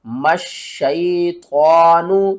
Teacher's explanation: میم کو آپ نے شین کے ساتھ ملانا ہے سختی کے ساتھ